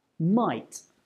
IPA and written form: maɪt (might)